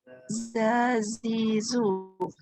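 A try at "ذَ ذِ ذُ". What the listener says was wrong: Okey, jangan letak lidah dekat dalam. Kalau dekat dalam dia jadi huruf zai. Zaitun, zazizu dalam. Huruf zal kita pakai untuk perkataan zuriat. Lidah keluarkan.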